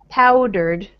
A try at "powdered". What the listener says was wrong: And more, little bit more stress on the first syllable, powdered.